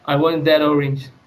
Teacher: So when when normal English speakers would say, "I want that orange." So we can hear the D sound before the start of the word orange. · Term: catenation